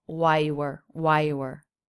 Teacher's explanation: The word you is not reduced. I do hear a quick oo vowel.